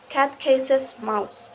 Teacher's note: in this sentence the words cat and mouse are emphasized more than the other word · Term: sentence stress